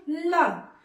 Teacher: ल को बोलेंगे तो जो जीभ है वो ऊपर की छत को छूता है और दोनों किनारे हवा निकल जाती है, दोनों किनारा खुला रहता है और जीभ बीचों बीच ऊपर के छत को छूती है। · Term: पार्श्विक व्यंजन